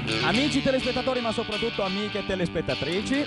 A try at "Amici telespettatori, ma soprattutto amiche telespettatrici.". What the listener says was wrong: No, scusa, dovresti usare la voce un po' meno nasalmente, diciamo, più nasalesca